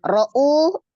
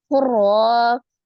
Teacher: Ro'u, ro-nya berbaris fathah, maka ro-nya dibaca dengan tebal atau tafkhim ya, karena berbaris fathah. U-nya mad ya, ada waw sukun sebelumnya dhamma di huruf hamzah.